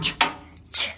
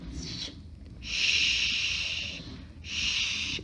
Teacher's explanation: This is a very short ch. Ch. This is longer shh.